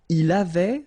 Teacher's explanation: Il avait, final T not pronounced.